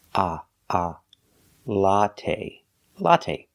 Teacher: it's a short o sound like hot and stop it's a short open Sound